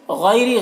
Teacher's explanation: سین کے تنوین میں اظہار ہو رہا ہے، اسے جلد پڑھنا ہے۔ غیری، غین کو پر پڑھنا، حروف مستعلیہ میں سے، یا لین ہے، اسے جلد پڑھنا ہے